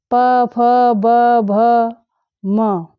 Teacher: उ और प वर्ग में जितने भी वर्ण आते हैं प फ ब भ म और उपदमानी में प फ, ओष्ठौ यानी दोनों ओठ, इन सभी वर्णों का स्थान दोनों ओठ हैं।